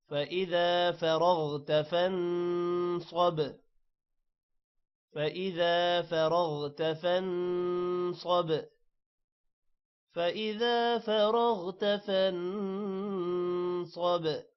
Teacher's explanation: فرغت را بھی موٹا ہوگا، غین بھی موٹا ہوگا. فانصب نون پر غنہ ہے، صاد موٹا ہوگا اور با پر قلقلہ ہے.